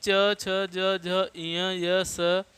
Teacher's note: ये सभी तालव्य वर्ण कहे जाते हैं, क्योंकि तालु से उच्चरित होते हैं, तालु का सहारा से।